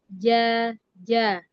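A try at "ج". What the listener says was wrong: Ini geser lagi nih. Ja, ja, gitu. Udah ke depan lagi. Ke tengah lagi. Aja, aja. Beda bedanya. Karena suaranya memang beda. Ketika sudah dekat ke ujung lidah, maka akan menimbulkan C yang kentara ya. Tapi kalau di tengah lidah C-nya tidak ada. Aja.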